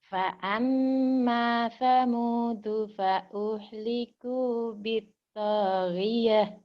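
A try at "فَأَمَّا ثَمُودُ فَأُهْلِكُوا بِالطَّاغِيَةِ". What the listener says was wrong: Bagus, cuman kurang cepat. Fa'amma. Kalau nggak cepat berarti bertahan di mad sama gunnah. Fa'amma Samudu fa'uhliku bittaghiyah.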